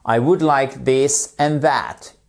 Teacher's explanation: c'est la forme contractée de would et on ne prononce pas le l